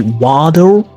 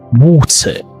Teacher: I do literally pronounce the letter T quite intensely.